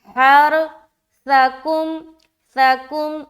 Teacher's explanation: देखिए सा में ना सीटी वाली आवाज नहीं आएगी, सा और सीन में यही फर्क है।